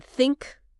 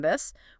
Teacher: Unvoiced T like in think. Okay. Where you mostly feel air movement. Okay. And then voiced T like in this where you feel a bit of vibration in your vocal cords.